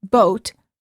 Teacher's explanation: For the o sound, as in boat, the lips are rounded and tense.